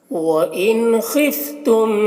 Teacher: نون میں اظہار ہو رہا ہے، اس نون کو جلد پڑھنا ہے۔